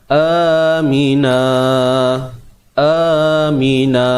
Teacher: Gantikan bunyi tanwin tadi aminan kepada apa? Bunyi mad dua harakat, iaitu na. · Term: mad iwad